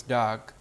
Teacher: For example, the O sound is very prominent in Bengal, and therefore, it could become dog, okay, where the O sound is extremely prominent, and it is possible to pronounce dog as dog, where the O sound borders on A